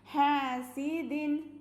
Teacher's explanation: വമിൻ ശർരി ഹാസിദിൻ ഹാസിദിൻ ഹ ഹ ഹൻ്റെ കൂടെ അലിഫ് മദ് ഉണ്ട്, അപ്പോൾ 2 കൗണ്ട് നീട്ടണം